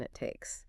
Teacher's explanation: The tongue goes up for the T in it. But because takes starts with a consonant, there's no real release of air. Just a smooth connection it takes. · The stop T in it blends into takes. Mhm. The tongue goes up for the T in it.